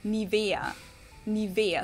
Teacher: so the emphasis is on the E